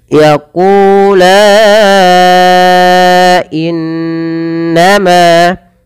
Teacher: in tahan suara nunnya, bacaan gunnah